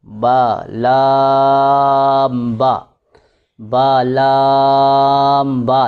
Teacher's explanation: لام کو ذرا لمبا کریں گے اور با کو اتنا لمبا نہیں کرنا